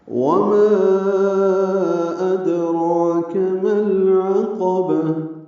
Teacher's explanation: وما نا پہ مد منفصل ہے، الف مدہ کے بعد حمزہ آنے کی وجہ سے · تائے مربوطہ پہ وقف کریں گے، ہا میں تبدیل ہو جائے گی۔ · ادراک میں دال ساکن پہ قلقلہ ہے